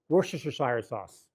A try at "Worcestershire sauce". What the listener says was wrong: You added a syllable.